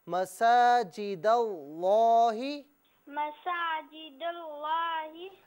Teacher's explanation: مساجد اللہ نہیں، لام کو پر کر کے پڑھیں